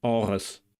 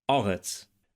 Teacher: In the final word, eretz eretz, we encounter the voiced uvular trill again in Biblical Hebrew and the fricative in Modern Hebrew. And the final consonant tsadi is pronounced in Biblical Hebrew like an emphatic s, meaning that it's pharyngealized. So, in Modern Hebrew it's pronounced ts.